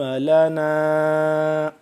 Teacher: نون الف مد زبر نا، یہ ہوگا لمبا، ٹھیک ہے، مد کی وجہ سے